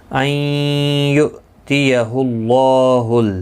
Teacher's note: نون ساکن کے بعد یرملون کا یا آیا ہے، ادغام مع الغنہ ہوگا